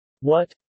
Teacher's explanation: second tone, or rising tone, or more specifically high rising, is a sound that rises from middle to high pitch